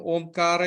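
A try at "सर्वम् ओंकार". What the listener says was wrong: sarvam onkara, because you used to do onkaram. Sarvam onkara. Onkara.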